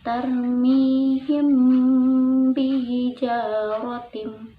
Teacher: dengung kemudian syafawi artinya lebih bir jadi menurut istilah ilmu tajwid apabila mim mati bertemu dengan huruf ba lalu dibacanya di dengungkan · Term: Ikhfa Syafawi